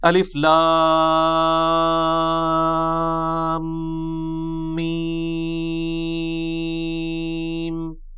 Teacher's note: 3 سے 5 الف تک کھینچنا ہوگا، لام کو بھی اور میم کو بھی.